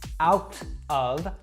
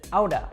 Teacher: said outta now this is how most americans will pronounce this that t sound in the middle actually warps to kind of a d sound